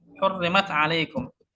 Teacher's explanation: Ta makhrajnya ujung lidah, ain makhrajnya di tengah tenggorokan. Jelas hukumnya idhar. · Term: tabaud